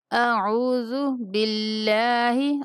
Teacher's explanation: اللہ کے لام کو یہاں پہ باریک پڑھیں گے، با کے نیچے زیر ہے